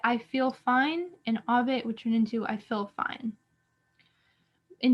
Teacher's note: the e and the i that appear before nasalized consonants tend to sound the same